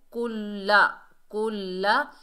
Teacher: कुल्लमा उल्क़िया फ़ीहा, काफ के ऊपर पेश है, आगे लाम मुशद्दद है, काफ को लाम से मिलाएंगे, मजबूती और जमाव से पढ़ेंगे लाम को